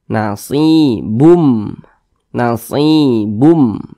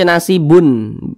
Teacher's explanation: jadi bunyi tanwin ini dimasukkan ke huruf mim jadi dibaca nasibum nasib Bum jangan dibaca jangan dibaca nasibn jangan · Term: idgham bhunah, idgham bi gunnah